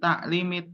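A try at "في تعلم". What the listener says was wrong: ta'allum ya, kalau nggak ada iya setelah lam berarti ta'allum karena artinya beda.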